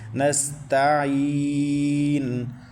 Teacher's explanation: نستعین، تا کے بعد عین، عین کو حلق کے درمیان سے مکمل ادا کرنا ہے، اور عین کے بعد یا ساکن ہے، یا ساکن سے پہلے زیر آ رہی ہے، تو یہ یائے لین ہے، یائے مدہ ہے، تو یائے مدہ کو ایک الف تک کھینچنا ہے۔ نستعین، اور لاسٹ میں نون کے اوپر پیش ہے، وقف میں ہم اس کو ساکن کر رہے ہیں تو یہ وقف بالاسکان بنے گا۔